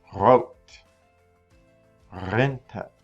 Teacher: We know that you have to roll it in the back of your throat.